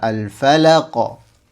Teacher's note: Itu tergantung dari hurufnya. Kebetulan huruf qof di sini adalah huruf yang tebal, maka pantulannya pun harus tebal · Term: qalqalah